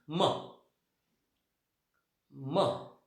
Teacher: So we are producing the sound with the help of our two lips. दोन्ही ओठांच्या साह्यानं. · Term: bilabial